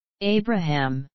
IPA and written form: ˈeɪbrəhæm (Abraham)